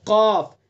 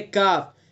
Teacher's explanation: قاف کے اندر صفت استعلا ہے، یعنی اس کو پر کر کے پڑھیں گے اور زبان کی جڑ کو بالکل اس کے مقابل اوپر کے تالو پر لگائیں گے، اور کاف کو ادا کرتے ہوئے تھوڑا سا آگے آ جائیں گے. آگے سے ادا کریں گے کاف، پیچھے کو آئیں گے قاف، آگے کو آ جائیں گے کاف.